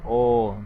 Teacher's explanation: ও উচ্চারণ করলে জিহ্বা আমরা যদি ও উচ্চারণ করি ও তাহলে জিহ্বা মধ্যমে মুখের মাঝ বরাবর অবস্থান করে এবং একটু পিছনের দিকে সরে যায় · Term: পশ্চাৎ স্বরধ্বনি